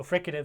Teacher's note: So fricative starts with an F sound, and that's a labiodental fricative.